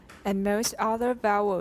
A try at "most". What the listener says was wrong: 不是 most, that's 英式 most. Mo. Yeah.